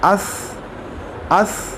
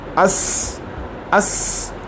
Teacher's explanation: इसके अंदर सीटी की आवाज़ नहीं है, ये सा की आवाज़ है आखिर में